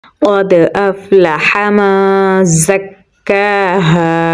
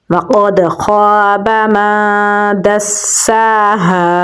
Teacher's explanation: ہا کو گلے کے نچلے حصے سے نکالیں گے، آگے الف مدہ ہے تو لمبا پڑھیں گے